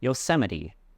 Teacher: the stress is on the second syllable, sem, Yosemite.